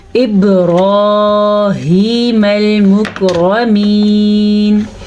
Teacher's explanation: میم جو ہے لام کے ساتھ جڑ رہا ہے